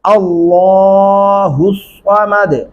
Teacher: اللہ لام موٹا پڑھیں گے اور لمبا بھی کریں گے